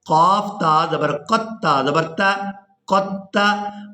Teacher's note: ہم نے قاف کو تا مشدد کے ساتھ ملانا ہے، دال کو ہم نے یہاں پر چھوڑ دینا ہے